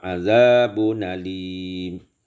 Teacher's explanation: naqal fathah kepada tanwin dan dibuangkan hamzah